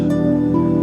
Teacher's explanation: It creates the friction, and when we create the friction, there is a little bit aspiration. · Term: affricate